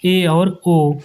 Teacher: जिन स्वरों के उच्चारण में मुख द्वार आधा बंद रहता है। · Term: अर्ध संवृत